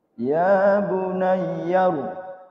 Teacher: Ya bunayya ditasdid saja, jangan diidgham.